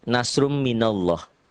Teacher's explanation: Dibaca tebal, berbunyi oh Allah karena sebelumnya berbaris di atas atau fathah. Ini fathah.